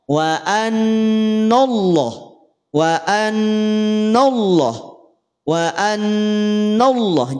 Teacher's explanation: Yang tebal itu hanya lafaz Allahnya. Sedangkan huruf nun jangan sampai tertarik menjadi tebal. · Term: tafkhim